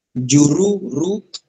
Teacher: Juru, ra dibaca tafkhim. Juruza, ra dibaca tafkhim tebal ya